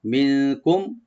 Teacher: নুন সাকিন এখানে আমরা এখফা করবো, লাইট গুন্না , আর কুম এখানে মিম সাকিন আমরা এখানে আমরা থেমে যাব,